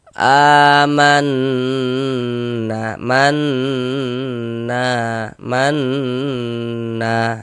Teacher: Karena dia ghunah ya kita gunahkan, kita denggungkan. Jadi di bagian mannya itu suaranya itu kita tahan, kita panjangkan sejenak. Amanna manna manna dipanjangkan begitu. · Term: gunnah musyaddadah